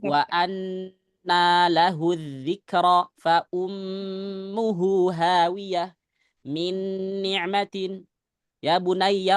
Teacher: Itu rasa-rasanya kok gunahnya kok ditahan gitu loh. Ada suara gunah yang kerasa dari hidung.